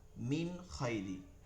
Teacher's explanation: ওই নুন সাকিন বা তানভীন কে গুন্না ছাড়া স্পষ্ট করিয়া পড়তে হয় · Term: ইজহার